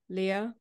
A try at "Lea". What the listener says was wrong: You said it the way many people do say it, but it's actually rhymes with a cup of tea. Just Lea.